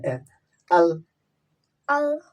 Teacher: জিব্বার আগের সামনে উপরে ২ দাঁতের গোড়ার সঙ্গে লাগায় আল